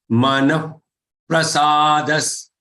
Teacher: the visarga has to be pronounced as if half fa but not half fa exactly. Okay, get the mouth in that position and breathe out.